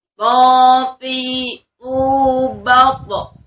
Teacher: Karena po ini ketika fathah, kasrah ataupun dhamma, dia memiliki sifatul huruf itbaq, yakni tebal ya. Dalam kondisi apapun dia tetap tebal. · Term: huruf to